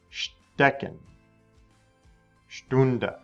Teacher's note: The ST sound at the beginning of the word makes a sht sound.